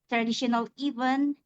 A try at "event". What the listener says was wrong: We have traditional even. We only get that one consonant, right? Even, we get the n. We don't get the n, t, s. So this is, unfortunately, this is a feature of English phonology, consonant clusters.